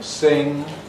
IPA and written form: sɪŋ (sing)